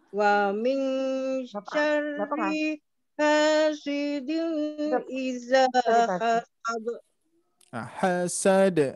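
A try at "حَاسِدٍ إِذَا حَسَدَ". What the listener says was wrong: Hasad turun. Iramanya turun. Nah, hasad ringan ya.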